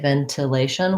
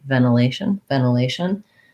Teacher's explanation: that nt often in american english gets reduced to more of an n